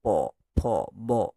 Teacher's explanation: দুটো ঠোট একে অপরকে ছুয়ে নিয়ে বাতাসটা সেখানে বাধা পায় বলে আমাদের এই অষ্ঠ ব্যঞ্জনগুলো নির্গত হয় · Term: ওষ্ঠ ব্যঞ্জন